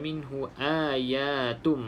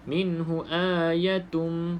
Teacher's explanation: pastikan sebut a dua harakat ya dua harakat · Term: Mad